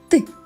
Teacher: відчуваєш як кінчик язика стукає за верхніми зубками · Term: звук т